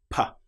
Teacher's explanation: With the P sound, we build up pressure without using the vocal cords. P. That sound is completely silent until it releases.